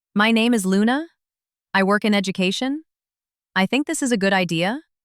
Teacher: your voice goes up at the end like you are asking if it is okay · the rising tone at the end of statements